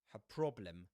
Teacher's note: Because of that, the word her is pronounced in its strong form, not in its weak form. The weak form is pronounced with a schwa